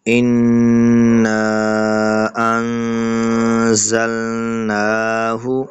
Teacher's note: زا کو سختی کے ساتھ اور نون کے اوپر غنہ کرنا ہے